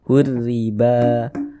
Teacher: Alif kecil nih atau harakat fathah berdiri sehinganya ba dibaca panjang Mad Thobi'i panjang dua harakat dua harakat itu kira-kira sepanjang dua ketukan